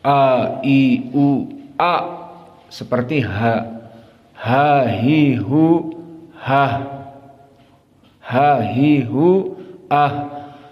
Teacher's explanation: Karena pertama hamzah makhrajnya to deep. To deep sangat dalam. Di mana makhrajnya adalah Aqsal halq.